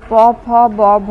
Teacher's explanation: নিচের ঠোঁট দিয়ে ওপরের ঠোঁটে শ্বাসবায়ু নির্গমনে ব্যাঘাত ঘটালে ওষ্ঠ ব্যঞ্জনধ্বনি উচ্চারিত হয়।